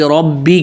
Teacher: ربی کا را موٹا با پہ تشدید پکڑنا ہے